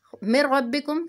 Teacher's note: نون ساکن کے بعد را آ رہا ہے، یہ بھی یرملون کا قاعدہ ہوتا ہے جس میں کہ ہم ادغام کرتے ہیں مگر بغیر غنہ کے، ادغام بلا غنہ۔